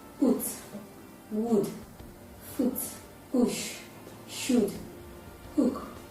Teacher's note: Therefore, it is a back, closed, lax, rounded sound.